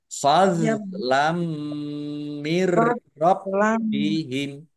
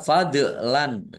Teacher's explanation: Dok sukun bukan kolkolah, jangan dipantulkan ya, jangan dipantulkan. Jangan dibaca fadlan, kadang sering dibaca fadlan gitu.